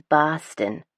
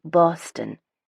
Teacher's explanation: locals will pronounce this moniker with varying degrees of emphasis on the first vowel